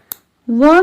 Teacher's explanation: व का उच्चारण स्थान दंतोष्ठ्य है, जिसका अर्थ है कि इसे बोलने के लिए दांत और होंठ दोनों का उपयोग किया जाता है।